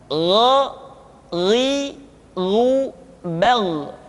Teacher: kha mengalir nafas dan gha tidak mengalir nafas. Dan keduanya memiliki persamaan, yaitu memiliki sifat al-isti'la. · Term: huruf gha